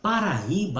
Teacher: Paraíba, a sílaba tônica é o I, forma o hiato tônico